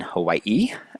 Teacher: the E sound, as in Hawaii, is a high front unrounded vowel. That basically just tells you where the tongue is positioned in the mouth.